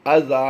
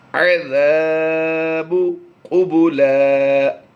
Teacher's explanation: عین کی ادائیگی ہم نے بالکل واضح رکھنی ہے کہ حمزہ اور عین کی ادائیگی میں فرق رہے